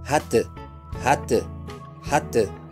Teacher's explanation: لا نمدها، بل نضيق مخرج الحرف من الحلق، نضيق الحلق نفسه